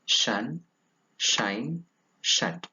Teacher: it is a voiceless palatal alveolar fricative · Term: voiceless palato-alveolar fricative